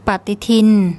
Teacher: the bo bla, which has a sound in between a B and a P. We have to put in an implied vowel, so there's no written in vowel.